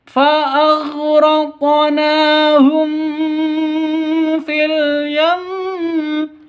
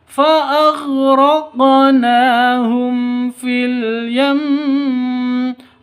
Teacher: bacaan izhar safawi itu jelas bacanya, tidak boleh dengung, tidak boleh disentak, ya tidak boleh dipanjangkan